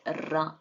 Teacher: ರ ಅಂದಾಗ ನಮಗೆ ನಮ್ಮ ನಾಲಿಗೆ ಈ ಮೇಲಿನ ಅಂಗಳಿಗೆ ಅಂದರೆ ಪೆಲೆಟ್ಗೆ ಒಂದೆರಡು ಮೂರು ಸಲ ಹೀಗೆ ಹೊಡ್ಕೊಳ್ಳುತ್ತೆ. ರ ಅಂದಾಗ ಇಲ್ಲಿ ವೈಬ್ರೇಟ್ ಆಗುತ್ತೆ ಹೀಗೆ ನಾಲ್ಗೆ, ಆಮೇಲೆ ಅಂಗಳಿಗೆ ಹೊಡಿತಾ ಇದೆ